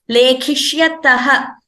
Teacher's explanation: Prathama Purusha Dvivachanam form, lekhishyatah, the visarga should be heard more clearly.